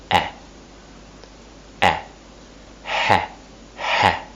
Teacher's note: My tongue is in the middle area of my mouth, at the front.